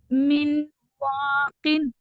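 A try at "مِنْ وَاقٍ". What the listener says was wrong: मिन नहीं, म्यू, म्यू। हाँ, मिम, इन।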